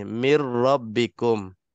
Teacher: Mim itu memang waktu kita baca, daripada mim terus kita lompat masuk ke ra, seolah-olah nun itu tak ditulis pun tak apa · Nun macam tak ada kena-mengena dalam bacaan. Dari segi bacaan, zahir bacaan kita, seolah-olah nun itu hilang. Dimasukkan sepenuhnya. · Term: idgham kamil